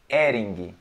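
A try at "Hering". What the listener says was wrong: See, so again, you cut the H out. Look, E-R-I-N-G, Ering.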